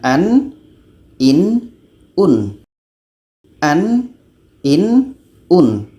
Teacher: Jadi nun ini kita sebut secara jelas, tidak ada anginnya.